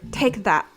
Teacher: But European T is said behind the teeth. And so it's like, take that.